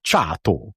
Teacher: You emphasize the first syllable whenever you're speaking Hungarian.